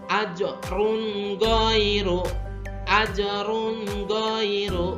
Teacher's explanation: Nun mati atau tanwin dibaca jelas dan pendek tanpa mendengung. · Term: izhar halki